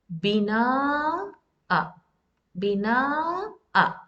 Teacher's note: You have to prolong this long vowel and just one count on hamza.